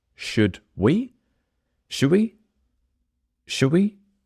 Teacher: the D is completely gone